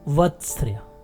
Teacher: मसूड़े के तुरंत बाद कंपन जात व्यंजन अर्थात र का उच्चारण होगा, तथा अंत में अर्ध स्वर य का उच्चारण होगा।